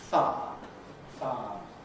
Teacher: I, the second part of the I diphthong, can be lost, giving you far, far.